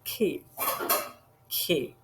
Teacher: soft palate at the back of the mouth तब produce होता है K